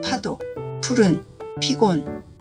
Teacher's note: 반면에 피읍은 입술을 붙였다가 뗄 때 숨을 세게 내보내면서 발음해야 합니다. 공기를 입술 사이로 세게 내보내야 해요. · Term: 거센소리